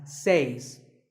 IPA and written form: s eɪs (says)